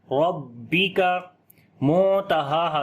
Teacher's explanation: را کو موٹا پڑھیں گے اور با کے اوپر آواز کو روک کر پڑھیں گے سختی کے ساتھ. ربک منتہاہا نون ساکن کے بعد تا آگے اخفا کریں گے باریک اخفا ہوگا.